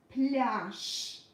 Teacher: Since the last letter is voiced, it becomes voiceless in the end.